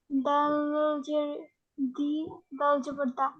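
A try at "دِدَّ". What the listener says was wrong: হলো না তো, এই দালকে ধরেন, এই যে তাসদিদ থাকলে দুইবার পড়তে হয়।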